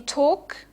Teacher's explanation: you can hear that the the L is actually not pronounced